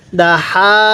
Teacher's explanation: এই হাটা উচ্চারণের সময় কিন্তু হালকা বাতাস বের হবে মুখ দিয়ে আর এই হা টা উচ্চারণের সময় মুখ দিয়ে হালকা আওয়াজ বের